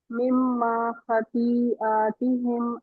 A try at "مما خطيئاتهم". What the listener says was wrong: خطيئاتهم to 4 counts. देखिए खती जो है ना इसमें ये 4 काउंट्स है मतलब मुत्तसिल बन रही है 4 काउंट लंबा करें इसको